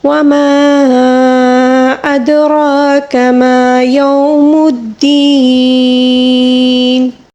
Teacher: اب دیکھیں وقف کے دوران زیر کو ہم ساکن دے کر پڑھیں گے، ٹھیک ہے، لیکن اس سے پہلے والا حرف جو ہے وہ یا مدہ ہے. یا مدہ کو ہم وقف کے دوران 3 الف کے برابر کھینچ کر پڑھیں گے